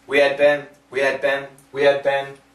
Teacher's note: we can cancel or weaken the H sound